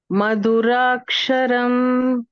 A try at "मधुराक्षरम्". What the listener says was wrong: இன்னும் கொஞ்சம் ஸ்ட்ரெஸ்லா சொல்லலாம். ஸோ மது அண்ணா ஒரு அர்த்தம் மாறிடும்.